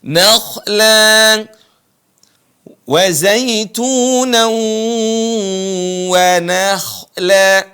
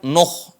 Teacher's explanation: Yang tebal itu adalah kha-nya, bukan nun-nya. Na tetap dibaca na.